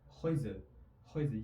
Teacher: So'zning oxirida kelgan r ko'p holatlarda nemislarda aytilmaydi.